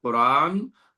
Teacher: قاف جب ہم ادا کریں گے تو تھوڑا سا زبان کا آخری حصہ اوپر تالو سے لگے گا